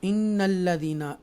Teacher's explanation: इन्नल्लज़ीना नून मुशद्दा लाम मुशद्दा extra stress के साथ हम अदा करेंगे, और ये या मद्दा है यहाँ पर, और ये वाव मद्दा है।